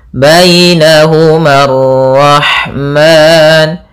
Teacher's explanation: Kemudian alif di sini memang pada dasarnya panjang, tapi karena bertemu dengan alif lam alif lam syamsiyah, maka dia tidak dibaca alifnya sehingga ma-nya langsung ke ra